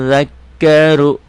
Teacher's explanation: Hukumnya ru tebel karena barisnya di atas. Saya zakkaru ronya tebel, tafkhim.